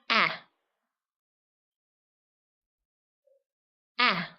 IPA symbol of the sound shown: æ